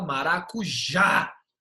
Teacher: a sílaba forte está na última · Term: oxítona